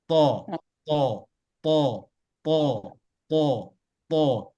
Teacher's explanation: ujung lidah menyentuh gigi seri bagian atas pas berdekatan tempat tumbuhnya